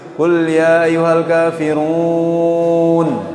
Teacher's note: Tapi kebanyakan kita kalau baca Al-Quran itu masih banyak yang keluar dari khaysum, keluar dari hidung, banyak sekali